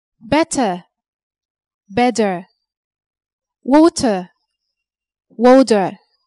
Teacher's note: Americans often pronounce the letter T like a quick D